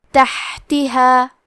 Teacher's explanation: ہا کی ادائیگی حلق کے درمیان والے حصے سے ہے، کیونکہ یہاں ہا ساکن ہے اور ہا بھی حروف الہمز میں سے ہے، تو ہم یہ کلمہ کو ایسے پڑھیں گے تحتہا.